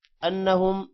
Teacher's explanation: نون پر غنہ ہوگا، میم پر بھی غنہ ہوگا، اور با پر قلقلہ ہے۔